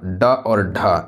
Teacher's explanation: ड और ढ यह आपका मूर्धा से बोली जाने वाली व्यंजन है। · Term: मूर्धन्य व्यंजन